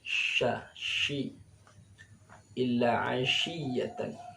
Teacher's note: shin ini punya sifat tafasyi namanya, menyebarnya udara dalam mulut